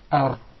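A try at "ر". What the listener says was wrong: There is a repetition of the Ra. He actually pronounced several Ra's. We just want one Ra.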